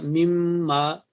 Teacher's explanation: تو من کا میم کے ساتھ مدغم ہو کے یا ادغام ہو کے میم کے اوپر تشدید آ گئی، اور ہم نے اس کو پڑھا مم ما۔